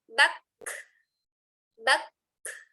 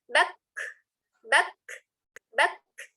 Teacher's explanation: Jika sukun semua dimutkan ya. Jadi kalau huruf kaf sukun itu dimatikan dulu atau ditahan suaranya, kemudian baru mengalir nafasnya. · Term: hamas, mengalir nafas